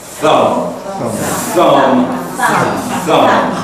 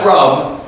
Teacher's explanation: The key in the pronunciation of thumb, is the TH sound. The tongue comes out between the teeth.